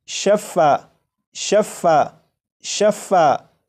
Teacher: فا کے اوپر تشدید ہے تو جب اسے پڑھیں گے تو فا کو ایک نہیں بلکہ دو مرتبہ پڑھا جائے گا